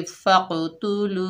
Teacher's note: लाम के ऊपर पेश है, आगे वाव साकिन है, ऊपर छोटी मद आ रही है, मद मुनफसिल जायज़, इसको 3 अलिफ की मिकदार खींचकर पढ़ेंगे फ़क़्तुलू। हमजा के ऊपर ज़बर है, आगे नून साकिन है, हमजा को नून साकिना से मिलाकर पढ़ेंगे।